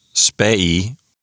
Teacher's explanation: The genitive singular form is spei, with a short e there, followed by a long I.